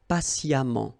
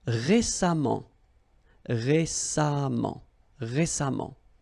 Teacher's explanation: even if you write it EMMENT, phonetically it goes like amant